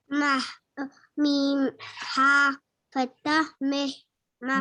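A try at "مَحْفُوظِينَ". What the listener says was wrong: It's not kasra, it's fatha. Okay. If it's kasra, then meh. It's fatha.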